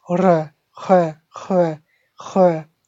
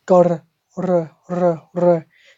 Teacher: So you got R at the throat and R at the front.